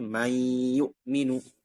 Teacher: Lalu dia dimasukkan nun sakinahnya ke ya, sehingga dia seakan-akan menjadi huruf yang bertasydid. Jadi dua huruf yang berbeda dijadikan satu, dileburin. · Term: idgham